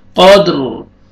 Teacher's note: را ساکن ہو جائے گا، را کو پر کریں گے کیونکہ را سے پہلے ساکن ہے، ساکن سے پہلے فتحہ، را کو پر کریں گے۔